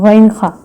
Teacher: غین خا حلق کے اوپر والے حصے سے ادا ہوتے ہیں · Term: حروف حلقیہ